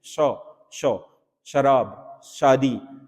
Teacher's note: वैसे तो ये उसमें व्यंजन होता है, परंतु इस सौ का उच्चारण करते समय जैसे हम बोलते हैं शौ, शौ, शराब, शादी, ठीक है, शौ, तो ये जो आपका शौ होता है इसमें आपका जीभ तालु के साथ थोड़ा बहुत आपका स्पर्श करती है, तो ये इसमें तालव्य होगा।